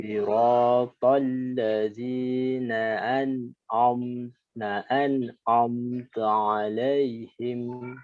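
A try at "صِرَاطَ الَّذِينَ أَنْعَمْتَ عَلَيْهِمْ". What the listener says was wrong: Sebentar. Ditipiskan lagi. Nah, an'am.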